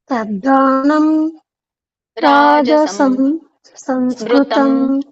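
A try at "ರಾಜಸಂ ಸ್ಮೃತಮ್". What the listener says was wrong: ರಾಜಸಂ ಬೇರೆ ಸ್ಮೃತಂ ಬೇರೆ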